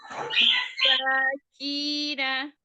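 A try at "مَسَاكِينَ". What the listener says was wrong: Nunnya dijelaskan lagi, jaharkan. Jangan jadi nggak kedengeran. Masakina.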